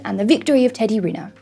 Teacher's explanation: When we have someone's full name, we tend to put that main stress on the family name.